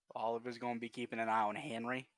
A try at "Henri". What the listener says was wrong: No, you said like Henry.